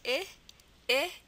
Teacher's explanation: it's a mix of a schwa and a short I sound. So we're going to, put it with our E.